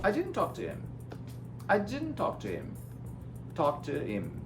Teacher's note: Um americano, quando ele vai falar, ele corta o H do him and do her, quando o him and her não for importante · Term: reduced sounds